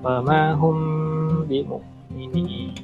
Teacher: Ketika hum itu hukumnya ikhfa syafawi. Wama hum dilamakan sedikit.